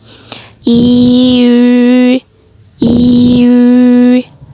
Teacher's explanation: kalian bisa mengucapkan i dulu. Seperti membaca i, tapi bentuk bibir itu membentuk seperti saat kita mengucapkan huruf u.